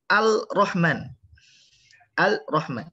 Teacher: lam syamsiyah ketemu dengan ro, maka lamnya itu dia tidak dibaca